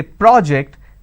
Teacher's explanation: when i'm stressing on the first syllable it becomes a noun